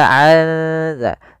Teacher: Nun mati bertemu dengan zal yang mana zal termasuk huruf ikhfa, maka suara nunnya samarkan ke makhraj huruf zal. Maka azza sembari ditahan suara dengungannya sepanjang 2 harokat.